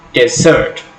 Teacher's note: in the word desert, the last syllable is stressed